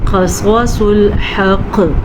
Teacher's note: صواد کو پر پڑھنا ہے، قاف کو پر پڑھنا ہے، یہ دونوں حروف مستعلیہ میں سے ہیں